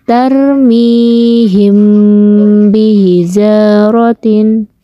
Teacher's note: Adapun cara membacanya harus dibunyikan samar-samar di bibir dan didengungkan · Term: ikhfa safawi